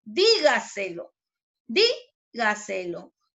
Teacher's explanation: ¿Dónde lleva la mayor fuerza de voz? En di, ¿cierto?